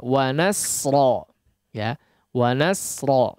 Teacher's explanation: sin yang jangan sampai menjadi shad ya, jangan sampai menebal sehingga menjadi shad. Termasuk di kata terakhirnya wa nasra ya, wa nasra, di situ adalah huruf sin ya.